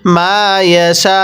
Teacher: ওয়াকফের সময় এই হামজাটিকে ধরবো, হামজা এর উপর পেশকে বাদ দিয়ে পড়ব।